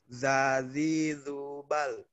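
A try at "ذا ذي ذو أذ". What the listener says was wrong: Oke, bagus, Kakak.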